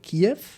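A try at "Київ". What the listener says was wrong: Primero que nada, Kiev estás pronunciando en ruso. ucraniano es Kyiv. Kyiv. Kyiv. K. Kyiv. Kyiv. En ruso es Kiev.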